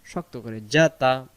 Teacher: জিম অক্ষর জিহ্বার মাঝখান থেকে শক্ত করে পড়তে হয়। জিম জবর যা, তা জবর তা, যা তা।